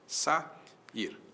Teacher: vogais que vêm em sequência e que se separam, ficam em sílabas distintas · Qual é o iato de sair? Sa ir o a para um lado, o i pro outro. Duas vogais que vêm em sequência.